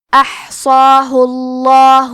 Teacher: احصاہ، آخری میں حرف الہا پہ پیش ہے تو لفظ الجلالہ کے لام کا حکم ہے تفخیم، تو ہم حرف اللام کو موٹی آواز میں پڑھیں گے